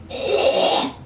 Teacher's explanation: Voiceless labialized uvular fricative.